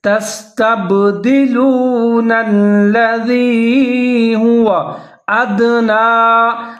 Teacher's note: دال ساکن ہے تو یہاں پر بھی قلقلہ کر کے پڑھیں گے. ادنا نون کے اوپر کھڑا زبر ہے، ایک الف کے برابر آپ لمبا کر کے پڑھیں.